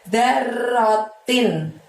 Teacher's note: darnya pendek, r-nya double, lalu tinnya bunyi n-nya terdengar dengan jelas, terucap dan terdengar dengan jelas ya.